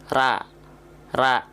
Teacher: pangkal lidah enggak diangkat bunyinya akan fathah